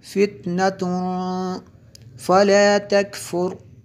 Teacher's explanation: یہاں پہ اخفا ہوتا ہے کیونکہ تنوین کے بعد فا حروف اخفا میں سے ہے